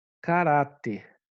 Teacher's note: é a penúltima sílaba que é tônica